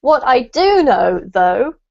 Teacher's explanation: we have to put a lot of emphasis on the do otherwise it doesn't come across with the correct meaning